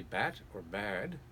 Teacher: the vowel in front of the D is longer than the vowel in front of the T, just by about 30%